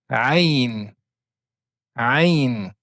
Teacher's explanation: c'est une lettre qu'on va prononcer avec le milieu de la gorge. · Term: la lettre Aine, la lettre aïn